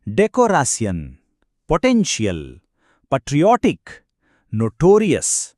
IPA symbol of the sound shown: ˈ